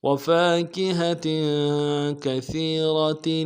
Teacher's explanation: سا کو باریک ادا کریں گے، یا کے ساتھ ملانا ہے، یا مدہ ایک الف دال میں کھینچیں گے، را کو موٹا کریں گے